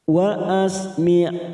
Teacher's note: ada huruf ain saat kita wakafkan maka sifat dari ain ini harus terasa yaitu sifatnya tawasud dan jahar